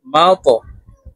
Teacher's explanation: ত কলকলার হরফ উপরের দিকে ধাবিত করে ধাক্কা দিয়ে উচ্চারণ করব